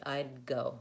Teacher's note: I just hold my tongue into the D and then I move it back for the G. I'd go. So if I'm not releasing, it might be easier.